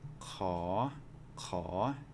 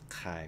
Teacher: each of these words are going to start with a rising tone even though there's no tone marks